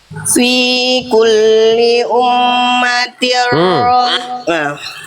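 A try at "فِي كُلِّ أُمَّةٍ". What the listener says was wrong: Mim tasdid. Apa mim tasdid yang udah kita bahas tadi? Kurang tahan. Gunnah ya.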